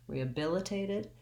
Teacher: If I said rehabilitated, probably people wouldn't notice, but I think the reason that drops out is that it's easier and smoother to go right from vowel to vowel. So bill is my stress syllable. That's where I want to have my length. I do have the lax I vowel there, but it'll be longer than the other I vowels later in the word because it's stressed.